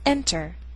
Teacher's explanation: words the Earth sound is in an unstressed syllable for example this first word is enter the stress is on the first syllable